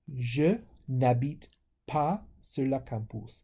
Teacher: the E of ne drops before a vowel.